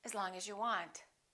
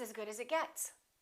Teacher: The vowel in the preposition generally becomes the neutral sound